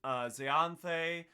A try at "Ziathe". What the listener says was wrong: you butchered the pronunciation of that. You added a letter to just make it chunkier.